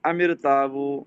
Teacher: حمزہ کو درمیان سے گرا دیا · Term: حمزہ وصلی